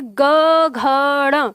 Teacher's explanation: जैसे ही आप बोलेंगे ग घ ड़, तो वाइब्रेशन आपकी उंगली तक आ जाता है। आप प्रैक्टिस करके देखो तो इसी से आपको पता चल जाता है।